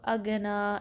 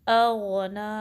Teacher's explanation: حمزہ کو غائن سے ملانا ہے، غائن میں گا کی آواز نہ آئے، اور پھر نون پہ الف صغیرہ ہے۔